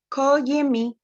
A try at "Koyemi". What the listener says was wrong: We all have issues with the ko, I know. It is koyemi. You don't have to change the tone of every other thing. It's just the ko.